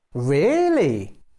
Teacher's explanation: you can use a rising falling tone to sound excited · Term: rising falling intonation